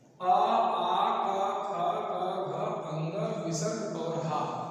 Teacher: इन वर्णों का जो उच्चारण स्थान है वो कंठ है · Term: कंठ वर्ण